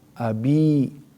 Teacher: kasrah bertemu sama ya sukun. Sehingga mad thobbi'i dibaca panjang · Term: mad tabi'i